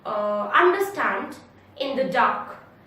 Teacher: It has 2 weak syllable followed by 1 strong syllable. Example, understand, in the dark, 3 syllables, understand, 3 syllables. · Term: anapest